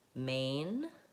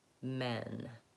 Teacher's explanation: I'm going to say the A vowel word first and the eh vowel word second. So I'm moving from the tense A to the lax eh.